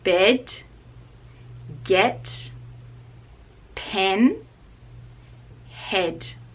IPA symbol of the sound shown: e